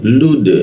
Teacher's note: dal dimatikan itu dipantulkan ke arah e